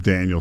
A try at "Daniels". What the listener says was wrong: Jaden Daniels with an S. No, you said Daniel, like Chase Daniel.